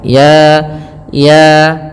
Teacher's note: maka kita hukumi dengan bacaan namanya mad thaabi'i. Panjangnya dua harakat.